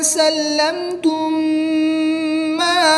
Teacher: میم ساکن کے بعد دوسری میم ہے تو یہاں پر ادغام شفوی ہوگا یعنی غنہ کر کے پڑھیں گے